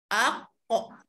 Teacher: Kalau qaf itu mati, kita kena bunyikan lantunan itu ya, aq. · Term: qalqalah